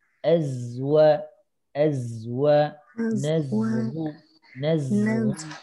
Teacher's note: Tadi sudah betul, zainya sudah terasa betul ya, fokus ke ujung lidah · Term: huruf zai